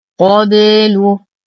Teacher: نقلقل الباء لأنها من حروف قطب جد